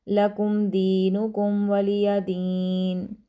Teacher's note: دال کو لمبا کریں گے کیونکہ یا مدہ ہے